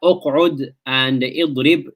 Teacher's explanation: you've got the prevention of the sound and the prevention of the breath, both, because of the shidda that is in there.